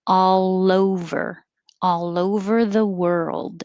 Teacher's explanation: the l will connect to the o